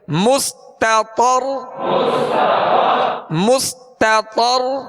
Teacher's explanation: تو کو جب پڑھیں گے ہونٹ گول نہیں کریں گے